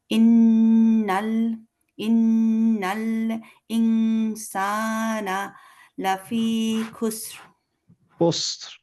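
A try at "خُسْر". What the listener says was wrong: সিন এবং র একসাথে হবে, খুসর। খুসরু না, খুসর, খুসর এরকম। রটা খুব একটা শোনা যাবে না, বাট খুসর এরকম লাস্টে আপনি বুঝবেন র বলছেন, বাট আমরা হয়তো বুঝতে পারবো না, এরকম একটা খুসর।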